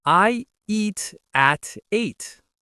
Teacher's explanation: The T in eat links to the A in at.